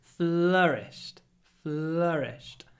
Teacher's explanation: and hold the L as well your FL it's flourished FL we move very quickly from the L to the r